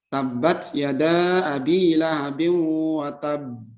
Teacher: ditahan dia, ya, ditahan 2 harokat kemudian baru diqalqalahkan, ya, diqalqalahkan.